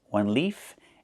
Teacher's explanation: One leaf with the F sound with no voice.